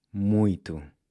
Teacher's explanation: when you pronounce the /t/, there should be no puff of air coming out